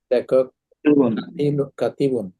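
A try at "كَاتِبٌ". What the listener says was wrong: আলিফ তো টান দিতে হবে, কাতিবুন,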